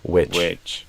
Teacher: I think I'd do a more relaxed vowel sound instead of a we, more of a wi.